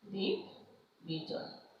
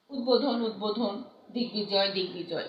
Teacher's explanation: সন্ধি বা সমাসবদ্ধ পদের ব ফলা অবিকৃতভাবে উচ্চারিত হয়। যেমন উদ্বোধন উদ্বোধন, দিগ্বিজয় দিগ্বিজয়, এই বটা কিন্তু হুবহু উচ্চারিত হয়।